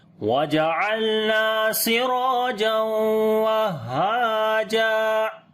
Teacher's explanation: تنوین کے بعد واو آ گیا تو یہاں پر ادغام غنے کے ساتھ کریں گے